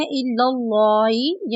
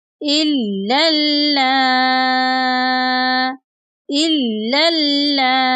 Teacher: ہن امہاتہم ان امہاتہم الا اللائی، اکثر لوگ اس کو پڑھتے ہیں الا اللائی، یعنی لام کو موٹا پڑھ دیتے ہیں۔ یہاں پر جو دونوں آپ کو لام مشدد نظر آ رہے ہیں ان کو موٹا نہیں پڑھیں گے بلکہ ان کو باریک پڑھیں گے۔